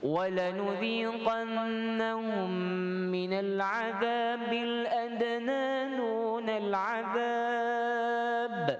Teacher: Kalau berhenti, qalqalahnya beratlah, qalqalah yang kubra. Kalau tuan-tuan sambung, dia tak ada qalqalah lah, dibaca ba dengan kasrah.